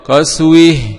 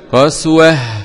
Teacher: قرأ الكسائي بإمالة الهاء عند الوقف